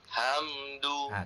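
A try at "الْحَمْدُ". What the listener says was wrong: Kuat sikit. Dia jadi angin tak keluar. Hamdu. Dia ada angin, tolak angin daripada perut tu keluar sikit. Hamdu. Macam kita pedas kan? Ayak. Kita embus angin tu kan? Dia kena kuat sikit anginnya tu.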